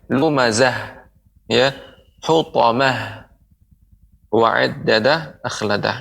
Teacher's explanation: ta'ul marbutah ketika disukunkan maka dia menjadi huruf ha. Maka pengucapannya lumazah, ya, hutamah, wa'iddadah, akhladah.